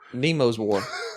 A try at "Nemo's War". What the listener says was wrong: I think you said Demo.